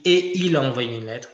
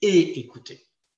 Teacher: il n'y a jamais de liaison entre « et » et ce qui suit. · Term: liaison interdite